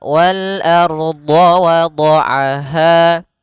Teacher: Ya, wal ardo wada'aha. Ardo, ar-nya tebal. Ro-nya dibaca dengan tebal. Kenapa? Karena dia ada huruf ra sukun di dalam huruf fathah. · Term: ro-nya tebal